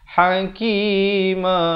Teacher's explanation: Kemudian ma itu bila waqaf mestilah 2 harakat. Jangan hakima.